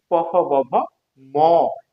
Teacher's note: প ফ ব ভ ম এটা আমাদের দুই ঠোঁটের সংস্পর্শে উচ্চারণ হয়। এই জন্য আমরা এই দুই ঠোঁটের সংস্পর্শে উচ্চারণ করে দেখি এটার নাম হচ্ছে যে ওষ্ঠ বর্ণ।